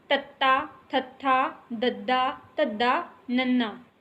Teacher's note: ਦੰਦਾਂ ਨਾਲ ਜਦੋਂ ਸਾਡੀ ਜੀਭ ਲੱਗੇ ਤਾਂ ਉਸ ਨੂੰ ਦੰਤੀ ਕਿਹਾ ਜਾਂਦਾ